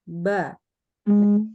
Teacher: Ba itu adalah huruf yang pakai bibir, bukan pakai gigi, bukan pakai lidah, ya, tapi pakai bibir. Bibir dua buah nih, atas sama bawah, dia bertemu.